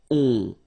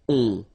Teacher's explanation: Okay, and then this O-N, so it's a nasal and it goes in your nose and it goes like on. All right, so you don't hear any N, so it's really on